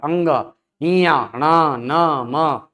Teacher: हर वर्ग का पांचवा वर्ण ऐसा है जिसका उच्चारण करते समय वायु नासिका की तरफ जाएगी। अंग ञ ण न म ये ऐसे वर्ण है जिनका उच्चारण करते समय वायु नासिका की तरफ जाती है।